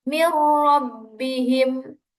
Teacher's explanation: Adapun contoh bacaan idgham bila ghunnah mirbihim. Di situ ada nun sukun bertemu dengan ro dan bacaannya tidak boleh didengungkan. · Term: idgham bila ghunah